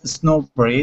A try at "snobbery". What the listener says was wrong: No, snobbery. It's actually snobbery with a short O sound, excuse me. You were saying it with a long O, but it's fine. The word is based on the word snob, and a snob is someone who looks down on other people because they think they're better than other people.